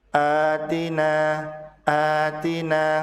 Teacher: sementara a dibaca panjang dua harakat disebut sebagai mad badal